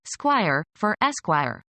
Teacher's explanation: The gradual disappearance of an initial, usually unstressed, vowel or syllable as in, squire, for, esquire.